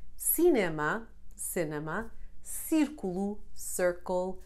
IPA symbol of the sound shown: s